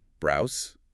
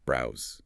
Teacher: To say it correctly, you must activate your vocal cords and produce a hard, buzzing Z sound at the end. Browse. That physical vibration in the throat is the key indicator of accuracy.